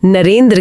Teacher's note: नर प्लस इंद्र में अ और ई मिलकर नरेंद्र की ए ध्वनि बनाते हैं।